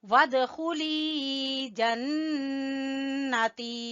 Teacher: نون مشدد کا غنہ اور تی کو کھینچیں گے یا مدہ کی وجہ سے